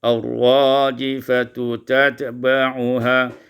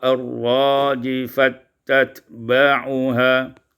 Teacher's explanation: idghamut ta fit ta, diidghamkan ta pada ta